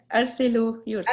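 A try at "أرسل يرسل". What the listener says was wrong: ارسلا نہیں، ارسلا یورسلو. ارسلا یورسلو. یاد رکھیں ارسلا ہوگا، ارسلو نہیں، ارسلا یورسلو.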